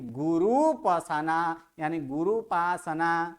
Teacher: गुरु ह्रस्व है, उसके बाद उपासना का ऊ दोनों मिलकर दीर्घ हुआ, यानी गुरुपासना, यानी गुरुपासना, गुरु प्लस उपासना इति गुरुपासना। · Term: दीर्घ ऊ